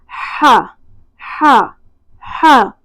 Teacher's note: اگلا مخرج ہے وسط حلق سے ہا اور عین کا۔ عین اور ہا ہمیشہ وسط حلق سے ادا ہوتے ہیں